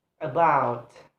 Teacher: For example, is about, about have two syllable, and then the stress is placed on the second syllable